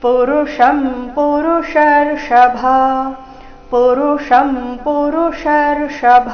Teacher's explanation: ಪುರುಷಂ ಪುರುಷರ್ಷಭ ಎರಡು ಮೂರ್ಧನ್ಯ ಷ ಬಂದಿದೆ